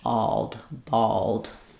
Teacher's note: In bald, I just basically go right from the ah and lift my tongue for the L and D to finish.